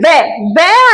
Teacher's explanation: फिर हमारा आ जाएगा ओ औ, ओ औ, कंठ और ओष्ठ, फिर वे आएगा हमारा दंत और ओष्ठ से, वे का उच्चारण है हमारा दंत और ओष्ठ